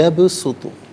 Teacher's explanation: با ساکن ہے لیکن حرف قلقلہ ہے تو آواز لوٹتی ہوئی محسوس ہونی چاہیے